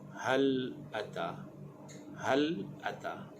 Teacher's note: Huruf ha makhrajnya di bahagian pangkal kerongkong.